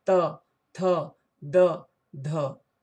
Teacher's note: जैसे त, आप जिह्वा को दांत से सटा रहे हैं, बिना जिह्वा को दांत से सटाए त बोला ही नहीं जा सकता, इसलिए इसका उच्चारण स्थान दंत है। देखिए, त, दांत में जिह्वा सटता है।